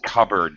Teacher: although I know the word is spelled with a p uh cupboard but it's actually pronounced cupboard the p is silent